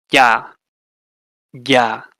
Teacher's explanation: palatal, body of your tongue towards the front